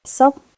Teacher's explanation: high falling tone, starts sharp, [music] drops fast, like shock itself.